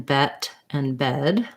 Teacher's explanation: my mouth is slightly more open so my tongue is a little bit lower for the e vowel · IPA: ɛ